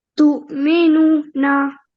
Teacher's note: So over here, we can see that there's noon with a dhamma and then waw sakina. So this rule is waw madiyya, where we prolong for 2 seconds